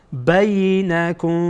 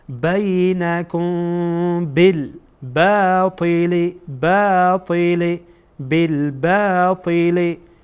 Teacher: بعد از میم ساکن با آمده. اینجا ما میم ساکن را اخفا میکنیم